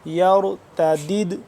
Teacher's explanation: قلقلہ کریں گے یہاں پہ ٹھیک ہے قلقلہ ہو رہا ہے کیونکہ دال ہے ساکن تو یہاں پہ ہم قلقلہ کریں گے